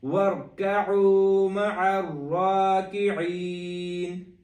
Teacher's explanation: تینوں جگہ پہ عین ہے، اور را کو دونوں جگہ پہ موٹا کریں گے